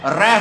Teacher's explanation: र होता है हमारा, जिसमें जीभ बार बार कांपती है। जीभ का अगर आपस में जैसे मतलब ऊपर नीचे इतनी गति होती है जीभ की, जैसे बिजली किसी तेज गति से ऊपर नीचे होती है जीभ, और उसमें उसको प्रकंपित कहते हैं। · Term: प्रकंपित वर्ण